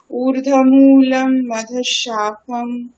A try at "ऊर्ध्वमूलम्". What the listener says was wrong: ঊর্ধ্ব নয় ম্যাম, ঊর্ধ্ব বকার আছে একটা, হ্যাঁ। ঊর্ধ্বমূলम् अधः शाखम्।